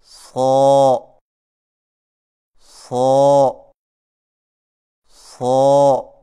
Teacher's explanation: صاد کی ادائیگی میں زبان کی نوک کو ثنایا سفلی کے کناروں سے مضبوطی سے لگا کر اور زبان کے پچھلے حصے کو تالو کی طرف بلند کرتے ہوئے موٹی اور سیدھی جیسی آواز میں پڑھیں